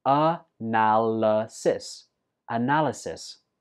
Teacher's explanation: This word has four syllables, and notice that the fourth syllable is not pronounced I, it's pronounced a.